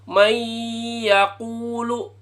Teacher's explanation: May yakulu, jangan dibaca may yakulu, jangan. Oke, harus ada dengungnya. Suara hidung. Kalau nggak bisa, pencet hidungnya.